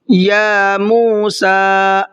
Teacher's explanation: یا کو بھی کھینچنا ہے اس لیے کہ اس کے اوپر کھڑا زبر ہے، اور موسیٰ کا سین بھی کھینچنا ہے اس لیے کہ اس پر بھی کھڑا زبر ہے۔